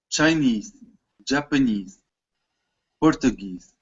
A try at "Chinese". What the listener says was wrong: You need to say this bold part. Louder, stronger, higher pitch. Stretch the vowel.